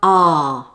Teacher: the sound ah like this notice the length of the sound it's a long sound the tongue is low and the mouth is relaxed and the jaw is open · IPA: /ɑː/